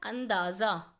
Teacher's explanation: अंदाज़ा में अ के बाद न की आवाज़ आ रही है